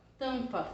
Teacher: o AM junto, antes da consoante, ele vai formar esse A nasalizado